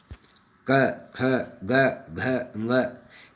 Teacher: इनका उच्चारण स्थान पूरी तरह से कंठ था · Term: कंठ्य